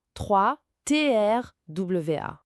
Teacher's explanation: ce re qui vient du fond de la gorge. Doucement, hein, pas besoin de forcer. Et le S à la fin.